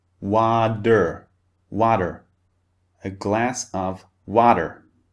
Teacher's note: In American English, however, very often the T sound in water becomes a D sound, like a D. It becomes water, water, a glass of water.